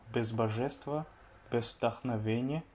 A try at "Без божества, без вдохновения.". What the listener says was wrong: Без божества, без вдохновения. Toi tu dis без, alors que non, c'est без божества. Et pareil à божества, un problème d'accentuation cette fois-ci. L'accentuation de божества, elle est sur le A, le dernier A, божества. Alors que toi, tu l'as mise sur le Y.